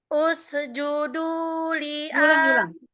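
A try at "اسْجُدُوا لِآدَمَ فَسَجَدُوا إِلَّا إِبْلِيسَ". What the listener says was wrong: Diulang. Sinnya nggak bersih lagi. Hati-hati. Jadi ke judnya jangan sampai ada se ya. Usjudu.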